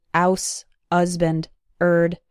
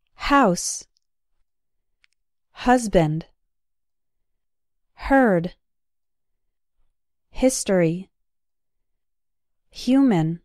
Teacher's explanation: Some students tend to drop the H in words like house, husband, herd, history, and human. The H sound is very soft, but it should be present, so don't say ouse, husband, erd, and so on.